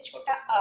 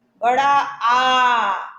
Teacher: देखिए जैसे छोटा आ बोलते हैं कम समय लगा, बड़ा आ खींच कर बोला, तो जितना छोटा आ में समय लिया हमने उतना उससे दुगना समय हमने बड़ा आ में लिया। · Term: दीर्घ